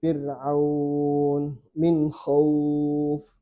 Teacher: fathah ketemu ya, ketemu huruf yang sukun, maka boleh dibaca 2, 4, 6. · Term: mad lin